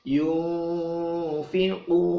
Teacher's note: nun mati ketemu fa, dibaca ikhfa, dengung